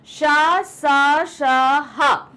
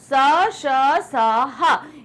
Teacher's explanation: इनको बोलने में मुंह के अंदर थोड़ा सा घर्षण यानी रगड़ पैदा होती है, जिसके कारण गर्मी पैदा होती है, इसलिए इसे बोलते हैं ऊष्म व्यंजन।